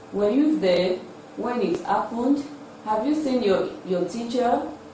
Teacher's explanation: So these are questions that require yes or no, and they are expressed with a rising tune.